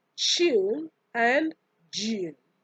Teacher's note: these are also known as alveopalatal affricates